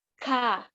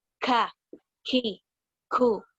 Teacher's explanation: karena ini syiddah, jadi suara kita harus ketahan dan ada hamesnya.